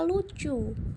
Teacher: udara mengalir di sisi lidah karena bagian lidah menutup saluran udara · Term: sampingan